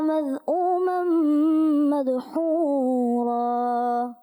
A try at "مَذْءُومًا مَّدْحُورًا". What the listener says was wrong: ماشاءاللہ آیت پڑھی، مگر کوشش کریں کہ مخارج کو اور کلیئر کریں، کہیں کہیں مخرج آپ کا کمپلیٹ نہیں ہوتا، صحیح واضح نہیں ہوتا۔ اچھا، یہاں پر بھی مدحورا میں بھی دال کلکلا واضح صحیح طریقے سے کیا آپ نے، اور اچھے انداز سے کریں۔ سیدھا قال اخرج منہا، یہاں پر بھی اس کو خوب واضح کریں۔ 10 میں سے آپ کو 8